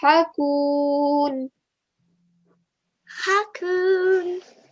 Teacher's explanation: The sound of the ha comes from the middle of the throat. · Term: ha sound